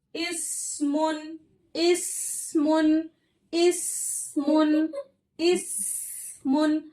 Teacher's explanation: हमारे जुबान की नोक सनाया सुफला यानी हमारे नीचे के जो सामने के जो दो दांत है वहां से लग रही है। इस और मजबूती से लगाएंगे सख्ती से लगाएंगे तो हमारी उसमें सिटी आएगी। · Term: बारीक हर्फ